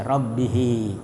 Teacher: Silah itu bersambung dengan pendek. Ya, cara membacanya huruf ha dipanjangkan sampai satu alif ya panjangnya itu biasa satu alif atau seperti ee mad thabi'i rabbihi. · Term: mad silah kasira, mad silah kasirah